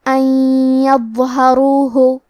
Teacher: ہم نون ساکن کو یا میں ملا کے غنہ اور تشدید کے ساتھ یہ حکم کو ادا کریں گے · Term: الادغام بغنہ